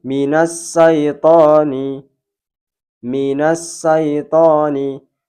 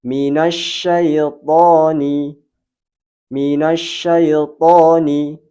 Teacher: yang benar adalah huruf shin, yaitu suara menggema di rongga mulut.